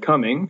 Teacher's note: So the first part of the word coming, right? Come is stressed and ing is unstressed. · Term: trochaic